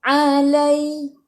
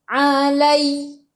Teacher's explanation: Ya ada sukun. Sebelum ya baris atas bacaan lin. Bacaannya lembut.